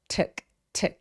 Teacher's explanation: 툭 할 때 툭 입술 내미지 않고요. 우리말의 의소리 비슷해요.